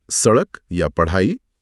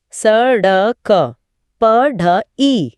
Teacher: हमारी जीभ पहले ऊपर उठकर मुर्धा यानी कठोर तालू को छूती है और फिर बहुत ही तेज झटके के साथ नीचे आती है। हां, ऐसा लगता है जैसे जीभ नीचे गिर रही है। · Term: उत्क्षिप्त